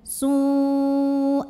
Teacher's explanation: maka tanwinnya masuk ke ya disertai dengung. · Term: idgham bi gunnah